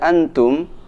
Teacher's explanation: Tanda sukun tidak ada di sini, artinya huruf nun harus dibaca dengan dengung. Dan di huruf mim ada tanda sukun, ada tanda mati, artinya mim harus dibaca dengan jelas.